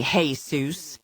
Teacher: exaggerating the Spanish pronunciation of the man's name, calling him Jesus. Emphasis loud on the first syllable